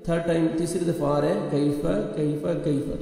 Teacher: تو آپ نے کاف کو نرمی سے یعنی لائٹ سے ساؤنڈ آئے گا, قاف نہیں پڑھنا, باریک پڑھنا ہے آپ نے کاف کو. کیفہ یا لین نرمی سے ادا کریں گے.